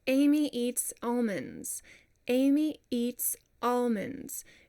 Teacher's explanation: Whenever you have a really harsh onset of the word, Amy, it almost acts like a consonant. So we don't want that.